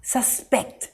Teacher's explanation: verb i suspect the man in a hoodie is the criminal the emphasis here is on the second syllable pect